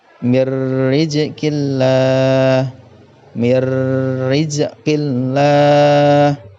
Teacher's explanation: lam jalalah, dibaca tarqiq atau tipis apabila lafadz Allah didahului harokat kasroh. Yang pertama tadi dhammah dan fathah, sekarang kasroh adalah tarqiq.